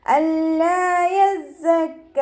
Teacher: സായ് ഉച്ചരിക്കുമ്പോൾ അസ് ആ ഒരു സൗണ്ടിൽ തന്നെ ഉച്ചരിക്കാൻ ശ്രദ്ധിക്കുക. നാവിൻ്റെ അറ്റം താഴെ മുൻപല്ലിൻ്റെ ഉൾവശത്ത് വെച്ചിട്ട് ഉച്ചരിക്കുക